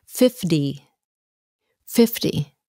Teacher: sounds like a d 40 and then 50 50. it has a t but it sounds like a d